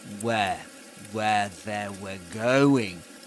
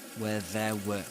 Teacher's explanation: So what we hear is him saying where they were going. Where ends up being where there. Rather than they, he says there.